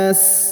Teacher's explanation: huruf na-nya dipanjangkan, boleh 2, boleh 4, boleh 6 ya.